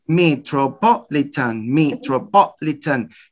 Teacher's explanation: you raise your voice up twice not just once twice metropolitan metropolitan notice twice here you have two stresses and you · Notice, you start high, metropolitan. So you raise your voice up twice, not just once, twice. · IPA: /metrəpɑːlətən/